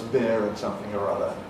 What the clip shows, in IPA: bɪər